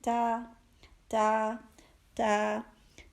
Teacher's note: زبان کی نوک کے ساتھ تھوڑا سا اوپری حصہ ثنایا علیا کی جڑ سے لگے گا تو یہ تا ادا ہوگا